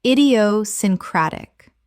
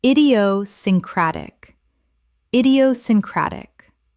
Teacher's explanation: Six syllables with the stress on the fifth.